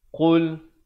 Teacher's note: Baik, kita lihat sambungan ayat ini. Qul, jelaskan saja bunyi lam matinya tanpa dipanjangkan, terus masuk.